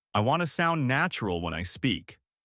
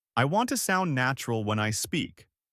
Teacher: notice how want to sounds more like wanna